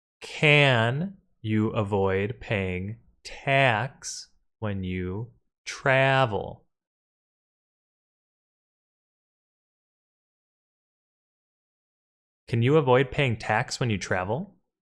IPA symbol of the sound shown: æ